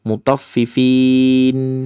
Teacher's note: Fin itu sudah masuk makhraj nun. Jadi nggak perlu meringis lagi.